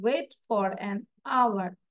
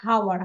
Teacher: H will be silent. H আমরা উচ্চারণ করব না এখানে। আমরা বলি নাই যে হাওয়ার, হাওয়ার বলেছি।